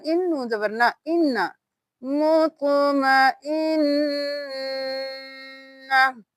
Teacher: اور یہاں پہ جب بھی نون پہ تشدید ہوگی تو نون پہ غنہ ہوگا، ناک میں آواز لے کے جائیں گے اور دیر لگائیں گے۔